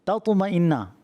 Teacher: پہلا تا ہے وہ باریک ہے، دوسرا تا پر ہے